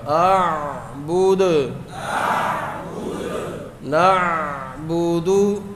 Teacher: پیش پر ہونٹ گول ہوں گے اور ساکن کریں گے تو پھر کلکلہ بھی ہوگا